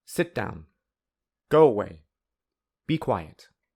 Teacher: The falling intonation can also be used in commands or orders.